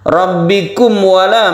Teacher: makhraj dari mim ini terdapat di syafawi atau bibir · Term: idhar syafawi